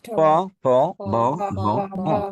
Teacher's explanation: দুই ঠোঁট না মিশিয়ে কখনোই উচ্চারণ করা সম্ভব হবে না। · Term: উষ্ঠ বর্ণ